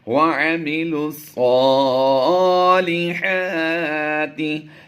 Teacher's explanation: لام کو ہم نے ڈائریکٹ صاد سے ملایا ہے